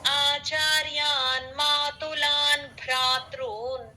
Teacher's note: ఇక్కడ కూడా భ్రాత్రున్ భ మహాప్రాణం